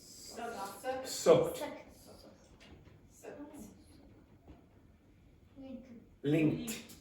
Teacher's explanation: if it's ed and it ends in a k sound here, then you pronounce like a t